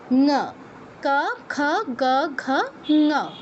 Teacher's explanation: ক খ গ ঘ এই চারটা উচ্চারণের ক্ষেত্রেই সেইমভাবে জিওভার পেছনের অংশটা কন্ঠে টাচ করছে। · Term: কন্ঠ বর্ণগুলোর